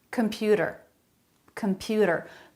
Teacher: they're all saying that with a flap computer data that a flap instead of a T sound computer